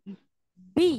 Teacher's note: Iya, malah bi-nya hilang. Ba itu punya sifat asyiddah. Asyiddah itu kuat ya. Suaranya tertekan.